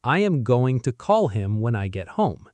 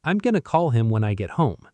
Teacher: In real life, I'm gonna call him when I get home. Going to merges into one smooth sound, gonna. The transition between gonna and call is seamless.